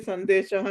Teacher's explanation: సో సం దేశః కాబట్టి ద అన్నది తకారానికి సంబంధించిన వర్గానికి సంబంధించింది కాబట్టి త వర్గంలోని పంచమా అక్షరం మకార స్థానంలో నకారం వచ్చింది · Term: పరసవర్ణం